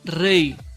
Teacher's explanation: Fíjate que esta Y no se pronuncia como consonante, sino como vocal.